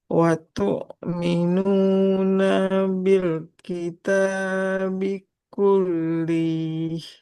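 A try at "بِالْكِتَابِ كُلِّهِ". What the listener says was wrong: Lamnya nggak panjang. Watu minuna bil kitabi kullih.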